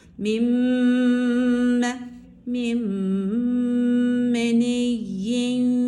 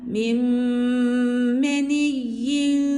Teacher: Müdğamun fihin eee şey müddğ olan ilk harfin dudak hareketi müdğamun fih dediğimiz ikinci harfin dudak hareketine uymak zorundadır. Burada da idgam başlar başlamaz dudaklarımızı öne doğru uzatarak gunne sesini burundan okuyarak telaffuz etmemiz gerekiyor. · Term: idgam meal gunne